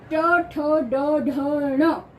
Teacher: बोलते हैं मुख के अंदर यानी ट ठ ड ढ ण पांचों वर्ण जो है वो मुख के अंदर दांतों के पीछे वाले भाग को स्पर्श करकर बाहर आते हैं इनकी जो ध्वनियां है मूर्धा को स्पर्श करके बाहर आती है